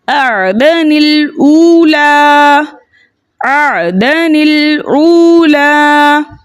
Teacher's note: اب یہ نون جو ہے یہ لام کے ساتھ ملا کر پڑھی جائے گی.